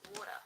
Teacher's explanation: In American English, they might say it more like a D, like water.